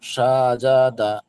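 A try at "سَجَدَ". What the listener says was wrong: সাজাদা। হ্যাঁ, আপনি ওই টান দিয়ে পড়ছেন সাজাদা, আপনি কিন্তু ইজরা করছেন, তাড়াতাড়ি পড়তে হবে, টান দেওয়া নিষেধ। ওই ইজরা, হ্যাঁ, ইজরাটা করার অর্থ হলো এটাই যে আপনার খেয়ালে থাকবে যে আমি টান দিতে বা নিষেধ করছি, তার মানে টান দেব না, সাজাদা, এইভাবে।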